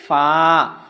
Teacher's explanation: নিচের ঠোঁটের পেট সামনের উপরে দুই দাঁতের আগার সঙ্গে লাগাইয়া